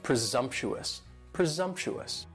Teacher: And presumptuous has 4 syllables and the stress is on that second syllable. And the S almost sounds a little more like a Z, presumptuous, presumptuous.